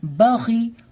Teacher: خا کو پر کر کے پڑھیں گے کیونکہ یہ حروف مستعلیہ میں سے